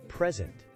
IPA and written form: prɪˈzɛnt (Present)